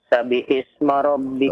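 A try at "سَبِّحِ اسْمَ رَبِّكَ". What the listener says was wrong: Perhatikan ya. Perhatikan tasydidnya ya. Coba perhatikan lagi tasydidnya. Sabbihis.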